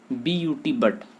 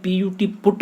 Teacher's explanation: अब बट में यू का जो उच्चारण है वो क्या है, ए है, बट ए हो रहा है यू का उच्चारण, जबकि PUT, पुट में यू का उच्चारण उ हो रहा है। तो वर्ण वही है लेकिन उसका उच्चारण बदल गया, जैसे ही शब्द परिवर्तित हुआ है।